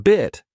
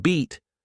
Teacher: In bit, the mouth is more relaxed, while in beat, your mouth stretches into a wider shape.